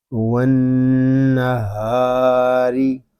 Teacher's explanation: را کو ہم باریک پڑھیں گے کیونکہ را کے نیچے زیر آ رہا ہے